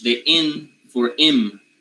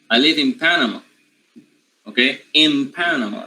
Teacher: panama starts with a bilabial sound